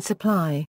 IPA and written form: səˈpʰlaɪ (supply)